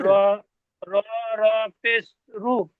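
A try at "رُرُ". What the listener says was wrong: রু নয়, রু বললে তো তাহলে একটা র হয়ে গেল, র পেশ রু। এই রটা তাহলে কোথায় যাবে?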